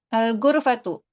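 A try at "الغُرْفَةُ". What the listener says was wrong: Al-ghurfatu, excellent.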